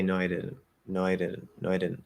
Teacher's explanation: the not is stressed right negatives are stressed so because that's technically content we're canceling the content um but